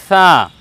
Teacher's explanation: জিহ্বার আগার সম্মুখ ভাগের ওপরে দুই প্রশস্ত দাঁতের আগার সঙ্গে লাগিয়ে আমরা বলব ছা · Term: ছা বর্ণ